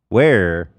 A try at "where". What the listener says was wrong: So the way to get rid of this R, if you make some little finger guns. Put them in your mouth. And then take them out and keep that space. Where?